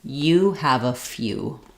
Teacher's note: The letters EW say the oo, the tense oo sound. And few is an example like music or communicate, where we have the y sound as well between the f and the oo. You can think about the word you and then adding a f.